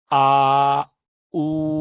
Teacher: اسی کو آپ آ او ہونٹ کو گول کیا تو او ہو گیا